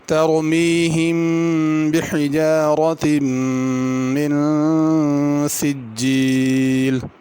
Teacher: ترمی کی را بھی پر کر کے پڑھنی ہے